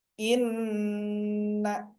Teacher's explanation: Gunnah musyaddadah, yaitu Contoh sebagai berikut di kalimat ini, inna. Nah, nunnya yang bertasdid double harus ditekan dulu. Ya, harus ditekan dulu. Tahan dulu.